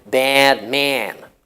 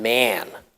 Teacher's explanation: some Americans tend to use a vowel which is similar to air so they would say something like their man especially with a nasal consonant as in man